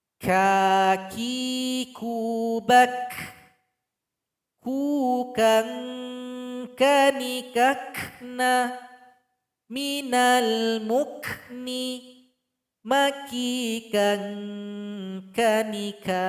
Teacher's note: Bedanya kalau huruf qaf tadi dia isti'la, suara naik ke langit-langit, sedangkan huruf kaf suara tidak naik ke langit-langit, nama sifatnya istifal. Kemudian huruf kaf ketika dibunyikan ada nafas atau angin yang keluar, namanya hamas.